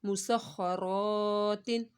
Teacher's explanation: मीम पेश मु, सीन खा ज़बर सख मुसख, खा ज़बर ख मुसख्खा, रा अलिफ ज़बर रा मुसख्खरात, दो ज़ेर तिन मुसख्खरातिन। रा को मोटा पढ़ना और एक अलिफ के बराबर इसको खींचना है क्योंकि यहाँ पर अलिफ मद्दा हो रहा है, अलिफ से पहले ज़बर आ रहा है।